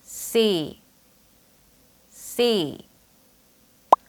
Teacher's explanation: 짧게 발음 하지 말고 약간 길게 빼면서 쎄이 하고 소리 내셔야 해요